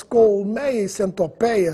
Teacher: apenas no Brasil as palavras colmeia e centopeia são pronunciadas com timbre aberto? Se você for a Portugal e escutar as palavras colmeia e centopeia com timbre fechado, não estranhe, porque eles também estão falando corretamente.